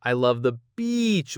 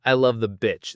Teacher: So remember, long E for beach and short I for bitch.